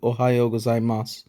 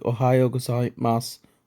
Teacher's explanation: you listen carefully to oh gazai Mas you'll notice that it sounds almost like oh gai Mas with no final u sound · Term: whispered vowel